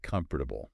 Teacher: when people are just talking they often drop that second syllable